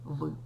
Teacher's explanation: в він губний сонорний